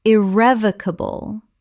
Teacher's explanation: Five syllables with the stress on the second.